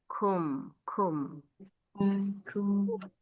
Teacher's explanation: Ya, kafnya jangan lupa ada hams.